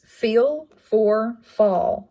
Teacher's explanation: it's a labial dental it's not voiced